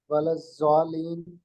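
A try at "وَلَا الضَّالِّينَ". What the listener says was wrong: جی 6 دفعہ لمبا کرنا ہے، ولا ضالین.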